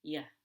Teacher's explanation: going to sound like yeah we don't even say that ooh we don't round our lips it's just yeah with really low energy it's very light